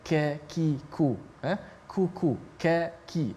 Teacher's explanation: Yang mana qaf dengan kaf makhrajnya dekat, tetapi sifatnya berbeza. Kaf dia nipis dan kaf ada angin sedikit, ada hamas, ka. Kalau kita sebut ka, ki, ku, kuku, ki.